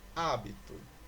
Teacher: Esta palavra é uma palavra proparoxítona, pois a sílaba tônica é o A.